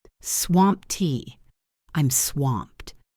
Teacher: Focus on the pronunciation of swamped. It ends with a T sound, even though it is spelled with ed.